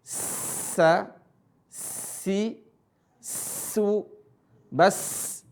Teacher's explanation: Ujung lisan ketemu gigi seri bawah. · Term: huruf sa